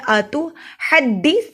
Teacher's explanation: اتو تا پڑھنے کے لیے زبان کی نوک کو دانتوں کی جڑوں سے لگائیے. اتحدثونہم تا کو نرمی سے پڑھیں گے, اس پہ سیٹی کی آواز نہیں آنی چاہیے